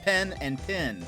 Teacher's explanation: pen and pin should sound the same like a mixture between the two words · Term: mix your vowels